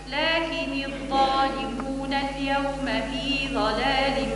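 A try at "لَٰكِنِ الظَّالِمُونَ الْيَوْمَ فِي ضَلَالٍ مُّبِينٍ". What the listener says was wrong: فخم الضاد في ضلال، في ضاد في ضلال مبين. فخم الضاد.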